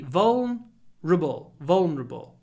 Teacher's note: we don't pronounce the E really vable vulnerable we don't say vulner vulnerable vulnerable and that's all · We don't pronounce the ER really.